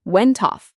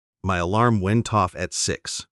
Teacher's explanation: Try to imagine the T at the end of went moves to the start of off.